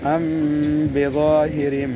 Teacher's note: ام میم کے بعد بظاہر با آ رہا ہے، میم ساکن کے بعد، اس لیے یہاں اخفا